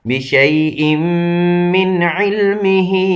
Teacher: اب چونکہ نون ساکن ہے، آگے حرف حلقی میں سے آیا ہوا ہے، تو اس لیے یہ نون اظہار کر دیا جائے گا، تو نون ظاہر کر دیا جائے گا، نہ کہ اخفا کیا جائے گا.